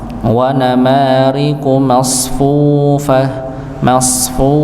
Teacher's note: Maka pada huruf fa ini dimonyongkan nggih, apalagi dia dengan panjangnya dua harakat. Wa namariqu masfufah masfu nggih, dimonyongkan ya. · Wa namariqu masfufah masfu nggih, dimonyongkan ya. Huruf qafnya juga dimonyongkan karena dhammah ya.